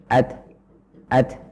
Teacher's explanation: jadi suara berhenti kemudian udara mengalir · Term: huruf ta yang sukun